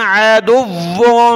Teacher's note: واو کو سخت کیا اور ناک میں آواز پیدا کریں گے